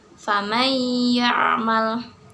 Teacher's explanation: Maka cara membacanya yaitu dileburkan, diidghamkan atau dimasukkan ke dalam huruf berikutnya disertai dengan tempo gunah yang dipanjangkan 2 harokat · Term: idgham bigunah